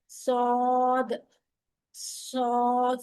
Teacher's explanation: अलबत्ता जा और सीन में आवाज बारीक और सीटी की तरह होगी और सद में आवाज मोटी और सीटी की तरह होने के साथसाथ जबान के पिछले हिस्से को ऊपर की तरफ बुलंद करेंगे